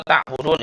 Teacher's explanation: Karena di akhir kalimat ya, di akhir ayat ada ciri-cirinya, wawu sukun bertemu ya, ada huruf mad bertemu huruf hidup ya, kemudian diwaqaf ya. Panjang sekali, bisa dipanjangkan, bisa panjangnya 2 atau 3 atau 6 ketukan ya. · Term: mad arid lisukun